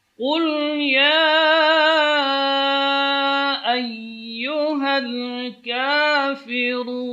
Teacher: Ayyuha, ya keluar dari tengah-tengah lidah.